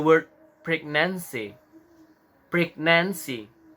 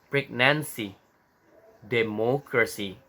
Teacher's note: Jadi di sini mendapatkan trik lagi bahwasanya emphasis on the third syllables from behind